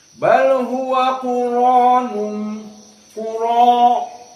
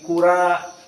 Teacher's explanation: karena ro dalam keadaan Maftuh maka RO di sini dibaca dalam keadaan tafkhim